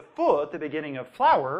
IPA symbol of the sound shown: f